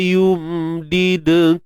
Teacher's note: Yum did yum tu sifat tawassut dan sifat gunnah asliyah yang ada pada huruf mim